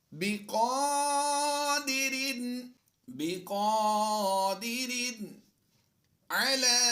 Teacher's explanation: کھڑی زبر کو لمبا کر کے پڑھتے ہیں ایک الف